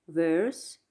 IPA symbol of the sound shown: ɜ: